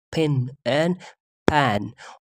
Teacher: Okay, vowels are also subject to assimilation, such as in the word pin and pan, where as anticipation of forming the final nasal sound consonant makes it easier to nasalize the vowels